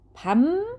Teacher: 받침 비읍이 뒤에 오는 비음 미음의 영향으로 자, 뭐로 변한다고요? 네, 미음으로 변합니다. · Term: 비음화 현상